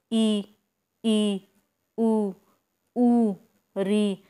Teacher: जब मुंह बंद करके ही कुछ स्वरों का उच्चारण किया जाता है तो वो स्वर होते हैं संवृत स्वर। इसमें से देखिए ई, ऊ, री, कितना मुंह खोलना पड़ता है, कोई ज़्यादा नहीं खुलता ना।